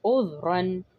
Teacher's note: عین حروف حلقی، ذال کو نرمی سے پڑھیں گے، را کے اوپر تنوین ہے، ہم اس کو پر کر کے پڑھیں گے اذ رن. اور اگر ہم اس پر وقف کریں گے تو ہم پڑھیں گے اذ را.